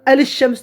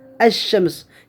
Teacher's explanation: Şin telaffuz kılınıdı. Neme telaffuz kılınmaydı? Lam telaffuz kılınmaydı. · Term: el-lam şemsiye